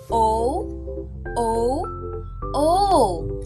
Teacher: Letrang O, palikod, pagitna, pabilog.